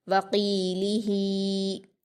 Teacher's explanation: قاف کو پر پڑھیں گے کیونکہ یہ حروف مستعلیہ میں سے ہے